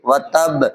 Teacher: با جو ہے جو حروف قلقلہ میں سے ہے، اور جب اس پر جزم لگ جائے گی تو قلقلہ ہوگا یہ